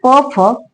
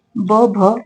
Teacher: प फ कठोर आहे ब भ मृदू आहे आणि अनुनासिक म आहे